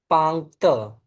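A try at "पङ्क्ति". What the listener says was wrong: Correct.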